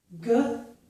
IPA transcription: g